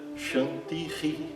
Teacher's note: tem esse som gutural ou aspirado parecido com o H e a repetição da vogal depois dele · Você praticamente repete a vogal final e acompanhada desse som R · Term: Visarga